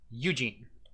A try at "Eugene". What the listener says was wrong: you're putting the emphasis on the wrong syllable eugene g g gets the emphasis u does not